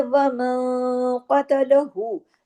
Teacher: نون ساکن کے بعد قاف ہے تو یہاں اخفا حقیقی غنہ کاملہ ہو رہا ہے، لیکن اخفا بھی بھاری ہو رہا ہے کیونکہ قاف بھاری لیٹر میں سے ہے، بھاری حروف میں سے ہے.